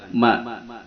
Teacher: jahr tidak ada hembusan napas ketika diucapkan